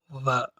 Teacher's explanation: ப, ம ஆகிய இரு எழுத்துக்களையும் இரு இதழ்களை இணைத்து உச்சரிப்பதால் இவற்றை ஈறிதழ் ஒலிகள் என்பர். வ இவ்வெழுத்தை கீழ் உதட்டிலும் மேற்பல்லிலும் பொருத்தி உச்சரிப்பதால் இதனை உதட்டுப்பல் ஒலி என்று அழைக்கின்றனர்.